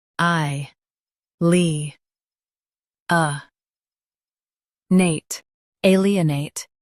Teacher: Stress A and keep nate soft.